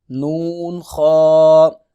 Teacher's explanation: خا کو پر کر کے موٹا کر کے پڑھیں گے